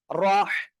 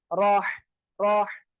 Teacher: গলাটা চেপে মুখ দিয়ে হালকা বাতাস বের করে আমরা উচ্চারণ করব। রহ, সিম্পল গলায় হাত রাখেন, হাত রাখলেও দেখেন এই যে রহ, রহ এমন উচ্চারণ হয়ে যাবে।